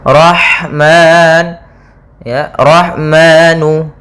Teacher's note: ha yang sukun yaitu mengalirnya nafas kita karena ada sifat hamsnya